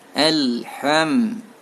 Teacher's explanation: Ha-nya bukan al-am, tapi ha ya, mengeluarkan angin.